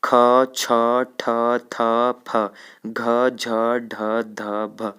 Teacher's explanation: अब इनको बोलने में अधिक हवा मुख से बाहर निकल रही है, इसीलिए इनको हम लोग क्या कहते हैं? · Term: महाप्राण ध्वनि